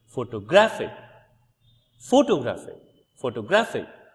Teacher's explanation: in the second uh word which is photographic you see that the primary stress shifts to the second syllable from the end syllable and the first syllable receives secondary stress